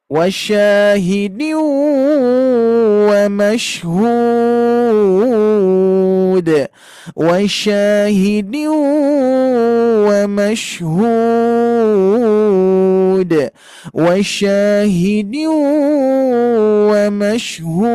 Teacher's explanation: Iramanya melengking ke atas.